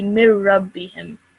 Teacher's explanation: If it's a ra mushaddad or a la mushaddad after a noon sakin, then the noon sakin will not be pronounced, so you wouldn't pronounce that nasal sound